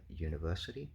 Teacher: in a longer word like say uh university, um the first syllable has still got some stress on it, right? That doesn't become ya. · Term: secondary stress